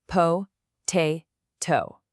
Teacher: Now that first syllable, po, isn't stressed, so no puff of air. But the second syllable, te, is stressed, and it starts with that T sound, so boom, it gets the puff. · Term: aspiration